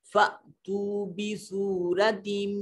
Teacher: یہ الف نہیں رہے گا، یہ حمزہ ہوگا، اور حمزہ کو ہمیشہ چٹکے سے ادا کرتے ہیں